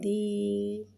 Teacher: یا ساکن سے پہلے زیر آ رہا ہے، یا مدہ ہو رہا ہے، لہذا یا مدہ کو ایک الف 2 حرکات کے برابر کھینچ کے پڑھیں گے